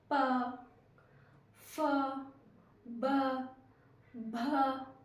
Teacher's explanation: इनकी ध्वनि हमारे होठों को टच होती हुई निकल रही है तो ये होते हैं ओष्ठ मतलब होठ से बोलने वाले वर्ण